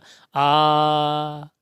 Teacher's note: अनुसार उसके बाद में देखिएगा यह है यहां पर विवृत स्वर विवृत का मतलब है मुख सबसे ज्यादा खुलेगा इसमें केवल आ आता है